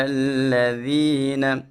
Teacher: ذال میں سٹی پیدا نہیں کریں گے۔